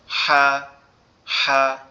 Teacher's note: একটু হাঁসের মতো ফ্যাসফ্যাসানি আওয়াজে উচ্চারিত হবে